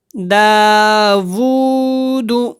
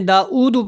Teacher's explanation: او نہیں ہے، یہاں پہ وو ہے، او کی آواز نہیں آنی چاہیے